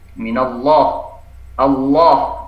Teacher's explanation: Allah ini pangkal lidahnya terangkat, tafkhim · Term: lam ditebalkan